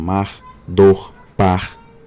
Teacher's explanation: nos nomes monossilábicos, os nomes de uma sílaba só, esse R pós-vocálico tende a preservar-se mais